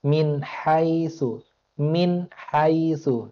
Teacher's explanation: tidak dituntut untuk didengungkan tapi harus dibaca jelas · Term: izhar